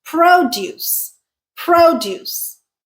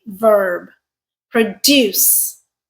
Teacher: Produce, first syllable stressed, is our noun. Yep. Produce, second syllable stressed, is our verb.